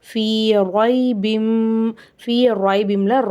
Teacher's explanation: அங்கேயும் நம்ம குன்னா செஞ்சு ஓதணும். ஃபீ ராய்பிம்ல ரா மேலே ஜபர் இருக்குது, ராவை வல்லினமாக ஓதணும்